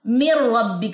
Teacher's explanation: پھر نون ساکن کے بعد را ہے، اٹس مین یہاں پہ غنہ نہیں ہوگا۔ من ربک کا یہ پڑھا جائے گا، من نہیں پڑھنا آپ نے اس کو، ٹھیک ہے؟